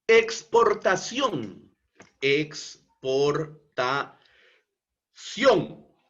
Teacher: Palabra aguda, porque la sílaba tónica se encuentra en la última sílaba, ción. Y como esta es una palabra que termina en la consonante N, entonces por eso es que es tildada.